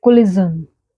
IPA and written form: kəˈlɪʒən (collision)